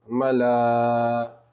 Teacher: مد متصل ہوگا اس لیے کہ حروف مدہ کے بعد حمزہ اسی کلمے میں ہے، جیسے ملا، حمزہ زیر ای، حمزہ کے نیچے زیر کی حرکت ہے، زیر کی حرکت کو جلدی پڑھیں، جیسے ای، ملائی۔